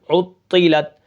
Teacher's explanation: عین طا پیش عطا زیر طی عطی لام تا زبر لت عطلت وقفاً عطلت. عین کو طا کے ساتھ ملائیں گے کیونکہ طا کے اوپر تشدید ہے اور طا کو ہم کیا کریں گے؟ موٹا کر کے پڑھیں گے